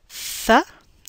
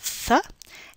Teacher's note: Our interdental sounds are made by placing the tip of the tongue in between the upper and lower teeth, and that is th, that's the theta symbol, th, and th, that's the eth symbol, th and th.